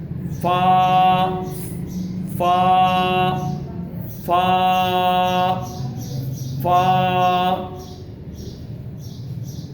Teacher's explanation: اوپر کے دانتوں کے کنارے اور نیچے کی ہونٹ کی تری والے حصہ سے، یعنی اوپر جو دانت ہے، فا فا فا فا، یعنی نیچے ہونٹوں کے اوپر اوپر والے دانت لگانے.